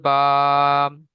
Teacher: দুই ঠোঁটের ভিজে অংশ হতে উচ্চারিত হয়